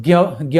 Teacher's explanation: Actual में अगर ज्ञ बोलेंगे तो ग य संयुक्त सुनाई पड़ेगा।